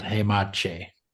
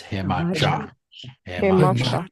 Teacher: Remember, this is always an ah sound, so it's cha. Not eh, because if it was eh, it'd be this, hemache, but it's hemacha.